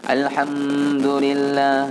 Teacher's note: Mim dengan dal tu izhar syafawi, tak boleh baca dengung.